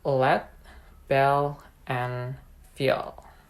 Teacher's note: allowing the air to flow around the sides of the tongue because of the complete closure along the center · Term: voiced alveolar lateral approximant